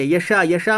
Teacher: حرف مد کے بعد حمزہ اسی کلمے میں, یشا, یشا میں دیکھو حرف مد کے بعد حمزہ اسی کلمے میں ہے اس لیے مد متصل ہوگا